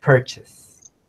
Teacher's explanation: the stress is in the first syllable, and the second syllable is pronounced chess.